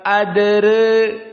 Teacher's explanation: at-taqlil istilahnya al-imalah as-sughra dengan tarqiq ra. Ra-nya ditarqiq, jangan ditafkhim.